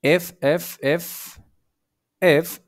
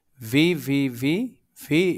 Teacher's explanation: এই যে এফ এবং ভি এই দুইটা উচ্চারণের স্থান বলতে গেলে একই জায়গায়